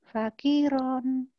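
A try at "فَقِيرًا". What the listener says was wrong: Ki-nya panjangin. Fakiron.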